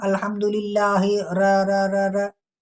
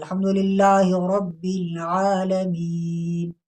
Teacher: तकरार के साथ नहीं पढ़ा, बिल्कुल सिंपल एक मरतबा पढ़ा है